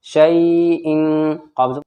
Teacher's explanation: حمزہ دو زیر ان، تنوین کے بعد قاف آیا حروف اخفا میں سے تو یہاں پر اخفا ہوگا، نون یعنی ناک میں آواز چھپے گی · شین یا زبر شین، دیکھیے یا ساکن سے پہلے شین کے اوپر زبر ہے تو یہاں پر یا لین ہوگا، یعنی نرم آواز کے ساتھ یہاں پر یہ یا پڑھی جائے گی